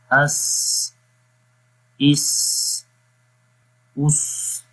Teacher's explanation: صفت صفیر میں سی ٹی کی آواز جو ہے وہ آتی ہے